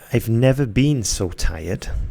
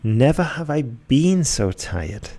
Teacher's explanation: The second sentence puts the stress on the never, and it has a much stronger effect than the first one.